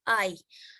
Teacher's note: The tongue moves from a low to a high front position for I.